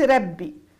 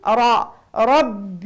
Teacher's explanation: الرا هنا مفتوحه اذا مفخمه